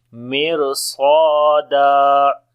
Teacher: So we are saying mir swada. Swad and alif both we read in heavy sound, and when we stop, so this one fatha we read here.